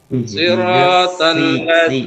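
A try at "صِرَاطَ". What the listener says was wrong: si tipis lagi. Sa-nya lebih tipis. Ihdinas siratal mustaqim.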